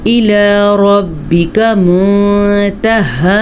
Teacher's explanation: یہاں پہ اخفا ہو رہا ہے کیونکہ نون ساکن ہے اور نون ساکن کے بعد سب سے پہلا حروف اخفا کا لفظ تا موجود ہے، تو ہم نون ساکن کو کسی حد تک چھپا کر پڑھیں گے